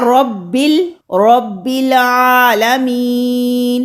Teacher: रब को आलमीन के लाम के साथ मिलाया, हमने यहाँ पर वसल किया, तो अलिफ यहाँ पर हज़फ हो गया, यानी गिर गया। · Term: हमज़ातुल वसल